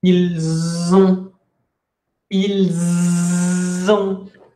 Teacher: La liaison es que esta S que nunca se pronuncia normalmente, la van a pronunciar, pero lo que van a hacer es hacer una división silábica de esta forma. Y ya no es una S, sino que es una Z.